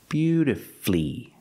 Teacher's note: is not correct we pronounce it with three syllables beautifully beautifully put the stress on your first and third syllable beautifully flee flee is the final syllable flee beautifully and of · Put the stress on the first and third syllable.